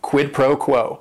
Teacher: And it is three words. Each word is only one syllable. And if you're saying it together, the stress is kind of on that first word and that last word, quid pro quo.